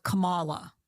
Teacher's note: I remember her putting the emphasis on the second syllable. So it was like Camala.